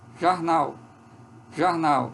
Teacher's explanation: a que sai no início em vez de Jó sai já esse é um a mais próximo do o então é um azinho um pouco posterior